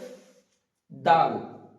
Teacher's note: জীবটা উপরের দাঁতের তলায় থাকবে একটুখানি সামনের দিকটা দিয়ে উচ্চারিত হবে